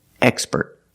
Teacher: With the word expert, we put the stress on the first syllable